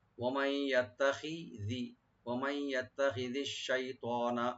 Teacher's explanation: ওয়ামাই এখানে নুন সাকিন ইদগাম উইথ গুন্না হবে। ওয়ামাই ইয়াত্তাখিযি, ওয়ামাই ইয়াত্তাখিযিশ শাইতানা, আশ-শাই এখানে আসিলিন, তটাকে একটু ডিপ করে করবেন, নুনে টান হবে না, শাইতানা।